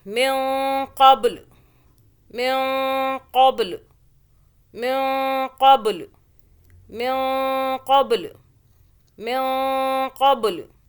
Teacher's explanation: آگے پھر اخفاء کا قاعدہ نون ساکن کا آ رہا ہے. اس نون ساکن پر ہم یہاں پہ اخفاء کریں گے، یعنی کہ اس نون کو ہم چھپا کے پڑھیں گے · با پہ قلقلہ یعنی کہ جھٹکا ہوا